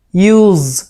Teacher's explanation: long sound ইউজ, শেষে জ উচ্চারণ করব